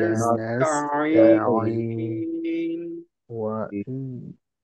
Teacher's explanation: আর এক তো রাখবো, রাখাটাও একেবারে নাকে কোনোভাবে টানের সাথে নাকের কোনো সম্পর্ক নেই, এটা সম্পূর্ণ মুখের থেকে। আর শেষে টান যখন শেষ হয়ে যাবে তখন যেহেতু নুন আছে, তারপরে গিয়ে নুনের সময় গিয়ে আওয়াজটা নাকে যাবে,